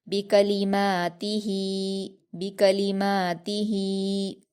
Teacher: और ता पर हरकत है, इसको जल्दी पढ़ेंगे। हा पर खड़ी ज़ेर है, इसको या मद्दा की तरह दो हरकत खींच कर पढ़ेंगे